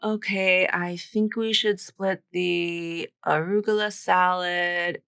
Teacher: So she just uses kind of flat, boring intonation here. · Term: flat intonation